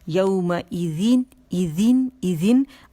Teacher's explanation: اور نہ buzzing sound ہوگی، زی نہیں بولیں گے، زین مخرج پہ جائیں گے. ٹپ آف دا ٹنگ ہماری طرف اللسان جائے گی، سامنے کے 2 جو دانت ہیں اس کے کناروں پہ لگے گی